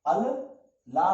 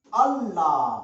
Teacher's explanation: वो एक लाम था इस लाम में घुसेड़ दिया